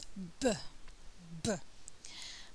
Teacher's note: So the lips are tightly together, stopping the flow of air, and then there's a kind of explosion and a release of the air. This time it's voiced. So if I put my fingers to my throat, I'll feel the vibration of the vocal cords. And there's hardly any airflow.